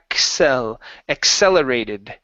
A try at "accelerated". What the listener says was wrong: So what you're doing, you're pronouncing a hard R sound right here.